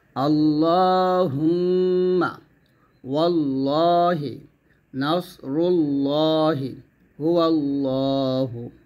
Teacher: আল্লাহ শব্দের মধ্যে লামের ডানে জবর কিংবা পেশ হলে উক্ত লামকে পোর করে পড়তে হয়। আল্লাহ ব্যতীত অন্য কোনো লামকে পোর করে পড়া যাবে না।